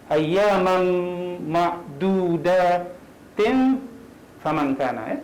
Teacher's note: Jadi kita masukkan tanwin ini ke dalam fa, jadi kena dengung. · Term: ikhfa